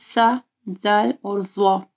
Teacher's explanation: سا، ذال اور ضا، ٹھیک ہے، تینوں کا سیم مخرج ہے. تو ذال جب آپ پڑھیں گے تو آپ کی زبان کی نوک اوپر کے دو دانتوں کے پاس آئے گی